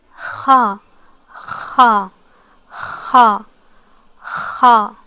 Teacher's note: The sound occurs as if you are making a grunting noise within the throat, while air moves from the upper throat to the mouth. Okay, so it's very similar as if you are clearing your throat, as you're clearing your throat about to spit or something.